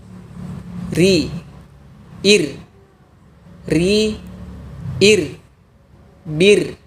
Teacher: Untuk huruf ro tipis, posisi pangkal lidah tidak perlu dinaikkan. Biarkan pada posisi asalnya.